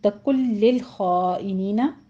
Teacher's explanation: نون ساکن کا قاعدہ ادغام بلا غنہ کریں گے · خا کو پر پڑھتے ہوئے آگے مد متصل واجب ہے، 5 کاؤنٹ کریں گے